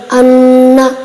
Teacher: غنے کی مقدار ایک الف کے برابر ہے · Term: غنہ